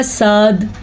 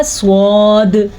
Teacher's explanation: अगर हम मुँह खोल के पढ़ें तो निकलेगा साद, और अगर मुंह को गोल करके पढ़ेंगे तो निकलेगा स्वाद